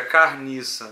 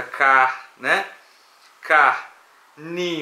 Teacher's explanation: A gente tem um C oclusiva com uma vogal aberta, car, né? Car, ni, uma nasalização e uma C, uma fricativa sonante, né?